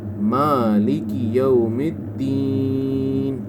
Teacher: میم کے اوپر کھڑی زبر ہے، اس کو آپ نے مد کے برابر لمبا نہیں کرنا